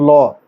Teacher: যখন ল উচ্চারণ করতেছো জিহ্বার দুই পাশ দিয়ে বাতাস বাইরে বের হয়ে যাচ্ছে। জিহ্বার দুই পাশ পাশ পার্ষিক। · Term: পার্শ্বিক